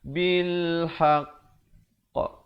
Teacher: Yang ada sabdu itu tahan sekejap baru lepas. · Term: akbar